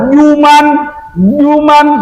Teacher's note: Kalau zuman gigi bertemu dengan ujung lidah, zuman kayak saat tadi. Kalau juman itu tengah lidah, nggak ada sangkut paut dengan gigi kok, jauh.